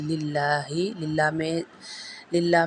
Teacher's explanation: للہ میں زیر ہے تو اس لام کو ہم باریک پڑھیں گے